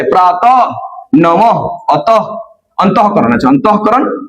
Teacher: ह के रूप में विसर्ग को पढ़ा जाता है।